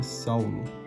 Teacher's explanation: O A, ele é mais forte que o U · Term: ditongo decrescente